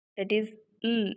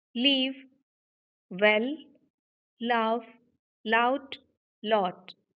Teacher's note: And you can feel the vibration. Utter the sound, l. Our vocal folds are vibrating. So that's why it is voiced consonant.